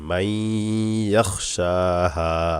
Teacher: নুন সাকিনকে বাদ দিয়ে ইয়াকে গুণা করতে হবে মাই ইয়াখশাহা শিনে খারা জবর এক আলিফ টান হবে হাতে জবরের